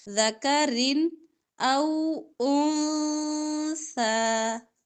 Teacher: اب رن میں دو زیر ہے جو اس کا واضح کلیئر اظہار کریں گے